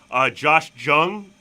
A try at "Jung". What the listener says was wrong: Young. Young. Because I used to call him Jung too. It's Young. J sounds like a Y. Young.